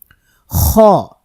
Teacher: এটা কিন্তু কন্ঠের শেষ থেকে হলকের শেষ থেকে উচ্চারিত হবে খ এই হরফের মধ্যেও বাতাস থাকবে এবং এই হরফটি মোটা হরফ